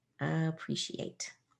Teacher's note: It turns into a sh sound when we blend that S into that E.